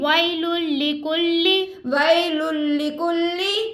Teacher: اب وی یا لین ہم اس کو نہیں کھینچ رہے, تنوین کے بعد لام آ گیا حروف یرملون میں سے غنہ نہیں کریں گے. کلی آپ آگے کاف اور لام کے اوپر حرکت ہے ہم اس کو نہیں کھینچیں گے.